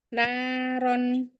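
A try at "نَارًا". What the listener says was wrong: Terlalu lama dua harokatnya.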